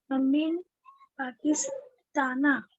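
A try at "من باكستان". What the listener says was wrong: पा नहीं बोलेंगे अरबी में, बा बोलेंगे. हाँ मिम पाकिस्ताना.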